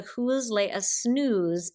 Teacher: you have the voiced and unvoiced sibilants here with the snooze